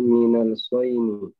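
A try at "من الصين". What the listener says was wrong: Minas sini. Shotnya di kasroh.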